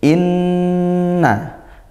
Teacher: nun bertasydid dibaca ghunah dengungkan